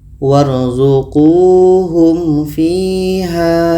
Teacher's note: Ada mim mati bertemu fa. Ini izhar syafawi. Dua-duanya dibaca jelas dan tidak dengung.